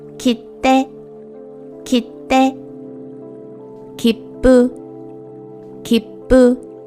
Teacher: the sound of the consonant after the small TSU is longer